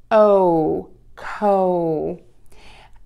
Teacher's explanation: To make this sound, you are going to make sure that the tip of your tongue is pointed towards the bottom of your mouth and let the air puff out. Move to the long O. Do this by opening your mouth and then moving to a pucker. Your mouth is going to be in an oval to start with.